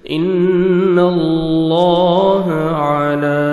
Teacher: ان اللہ سبحانہ وتعالیٰ کے نام سے پہلے زبر ہے، آپ نے لام کو موٹا کرنا ہے، پر بھی کرنا ہے اور نون مشدد ہے، غنہ کریں گے. ان اللہ علی، عین پڑھیں گے، لام کو 1 سیکنڈ کھینچیں گے، کھڑا زبر ہے، کاف کو باریک پڑھیں گے.